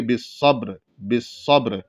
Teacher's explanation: گے، وَتَوَاصَوْا بِالْحَقِّ وَتَوَاصَوْا بِالصَّبْرِ، اس طریقے سے پڑھیں گے، یعنی را کی آواز موٹا ہونے کے ساتھ ساتھ ظاہر ہونی چاہیے · کہ وقف کی وجہ سے را ساکن ہو رہا ہے اور را ساکن سے پہلے با ساکن اور اس سے پہلے زبر ہے، اس سے پہلے جو ہے زبر ہے صاد پر، اس لیے جو ہے را کو رکتے وقت موٹا پڑھیں گے،